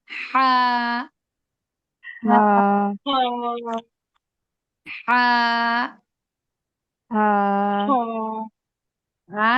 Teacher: হাটা হলকের মধ্যখান থেকে হবে